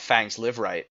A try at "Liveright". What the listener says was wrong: It's his name Liverright? Or it's Liveright. It is Liveright. There's only one R. It's not, or is it Liverite? It Liveright.